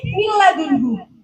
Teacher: Makhraj dan sifatnya nun itu semuanya kan masuk ke dalam. Buktinya nggak ada gunnahnya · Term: idgham bila gunnah